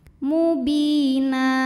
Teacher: ada baris tanwin fathah yang kita berhentikan atau kita wakafkan maka cara bacanya baris duanya jadi satu jadi fathah dan panjang dua harakat · [Musik] hidungubi Mad thobii ziri karena ada Ya Sukun sebelumnya kasrah maka huruf ba Ini panjang dua harakat Mubina na jika berhenti hukumnya adalah Mad iwad karena ada baris